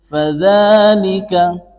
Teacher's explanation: pada kata dza itu mad tabi'i. Panjangnya 2 ketukan.